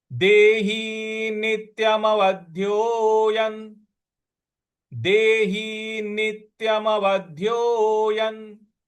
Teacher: य के ऊपर जो अनुस्वार है उसका उच्चारण हमको न ले आना है